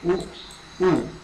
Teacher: तो ये बोलते हुए आपके जो होठ है उसकी जो आकृति है वो गोल हो गई है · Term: वृत्ताकार स्वर